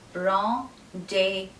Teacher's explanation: The Z in this word is silent and the S at the end is also silent. And the REN is pronounced as ron, not ren.